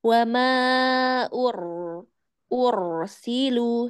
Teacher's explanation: Huruf ro ya, ro yang di sini harus ditebalkan sedikit